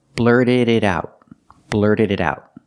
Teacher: The T in it is a fast D.